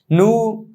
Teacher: নুনের শুধু হরফটা উচ্চারণ করার সময় ঠোঁটটা গোল করতে হবে